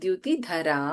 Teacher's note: ಧರ ಇಸ್ ಮಹಾಪ್ರಾಣ but in ದ್ಯುತಿ ದ is ಅಲ್ಪಪ್ರಾಣ